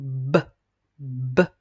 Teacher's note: vos deux lèvres, les lèvres du haut et du bas sont fermées et vous expulsez l'air en faisant B. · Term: le son B